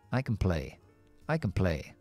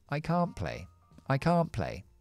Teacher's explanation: Así que, en lugar de ser can, así súper corta, es can't. Aunque la T no lo voy a pronunciar porque está entre consonantes, esta A está alargada y acentuada esta palabra.